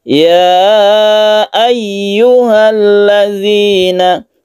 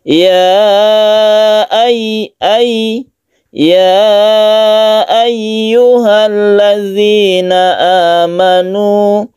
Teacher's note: tasydid ya ini harus kita tekan di ya-nya